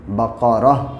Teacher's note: اگر رک جائیں گے سانس توڑ دیں گے تو دو زبر کو گرا دیں گے، بقرتن سے بقرہ ہو جائے گا.